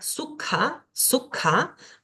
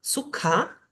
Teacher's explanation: una K pero aspirada